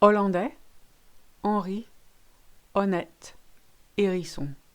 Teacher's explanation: Good news, you ignore your H's in French.